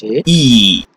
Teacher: vowels in this one you can practice a e your mouth your lips remain unrounded or spread nowhere is that rounded shape